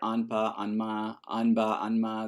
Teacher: Basically, you just keep the nasalization going and you retain the place of articulation.